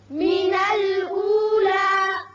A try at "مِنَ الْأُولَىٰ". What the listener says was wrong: اب یہاں وقت کی صورت میں لا الف کے برابر آواز رہے گی، لمبا نہیں کریں گے. من الأولى یہ غلط ہے.